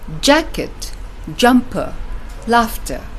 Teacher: the first syllable has got a stronger stress while the second syllable a lighter stress